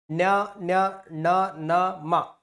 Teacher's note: ಉಸಿರನ್ನ ಮೂಗಿನ ಮೂಲಕ ಅಥವಾ ಮೂಗಿನ ಸಹಾಯದಿಂದ ಹೊರಹಾಕುತ್ತಾ ಉಚ್ಚರಿಸಲ್ಪಡುವ ಅಕ್ಷರಗಳನ್ನ ಅನುನಾಸಿಕ ಅಂತ ಕರೀತೀವಿ